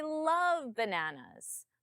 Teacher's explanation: My tone comes up on love. Imagine you just said, "I hate bananas." I love bananas.